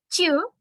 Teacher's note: звук ть у нас буде приголосний м'який глухий